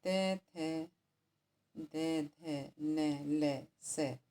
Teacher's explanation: ये बोले जाते हैं दांत से, तो हम इन्हें कहते हैं दंत्य वर्ण